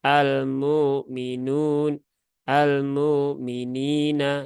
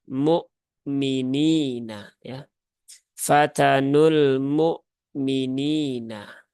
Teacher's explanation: harus jelas ya suara hamzahnya Jangan disamarkan jangan di ringankan kemudian minina ya minya biasa tipis saja tidak perlu tebal-tebal kemudian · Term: sifat syiddah